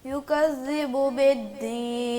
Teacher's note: ذال پہ نرمی کرنی ہے، سختی نہیں کرنی، سختی کریں گے تو زا کی آواز پیدا ہو جائے گی